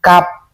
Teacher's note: Jadi kap itu dari pangkal lidah